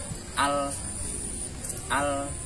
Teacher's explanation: Huruf lam bisa dilafalkan dengan menempelkan bagian ujung lidah depan pada langit-langit mulut. Bila dicontohkan menjadi al.